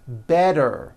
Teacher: The T turns into a D and the whole word is voiced. · What I want to tell you is, in American pronunciation, we like to make things easy. So if a letter T falls between 2 vowel sounds, which are voiced, so if it falls in the middle of vowels, then the T is pronounced as a D and the whole word is voiced.